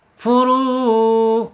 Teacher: dari tenggorokan keluarnya terus langsung ke mulut kita tidak mampir-mampir ke hidung ya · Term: aljaub